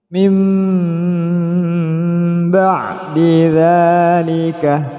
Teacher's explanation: nun mati bertemu ba, memasukkan suara nun pada ba disertai dengung.